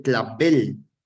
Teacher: la última sílaba es tónica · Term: aguda